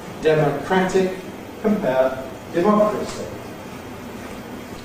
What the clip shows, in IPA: ˌdeməˈkrætɪk